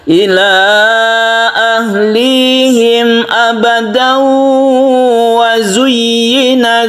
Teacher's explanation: tanwin bertemu dengan wawu idgham biguna, kita panjangkan